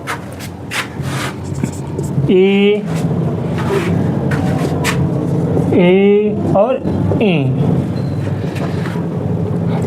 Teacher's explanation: ए और इ ये तालु से बोले जाते हैं। इसे तालव्य कहते हैं।